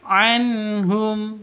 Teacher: Nun mati bertemu dengan ha. Cara bacanya jelas terang. Karena bacaan izhar halqi. Jadi tidak boleh didengungkan, tidak boleh disentak.